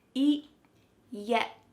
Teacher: My tongue is stopped at the top of my mouth and I'm not letting that air pass through.